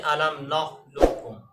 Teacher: اگر قاف کے ادغام کاف میں اگر قاف کی صفت استعلاء کو باقی رکھ کے ادغام کریں گے تو ادغام ناقص ہوگا، اور قاف کی صفت استعلاء کو باقی نہیں رکھیں گے تو ادغام تام ہوگا